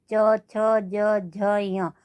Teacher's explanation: जीभ हमारे तालु से जाकर के टच हो रही है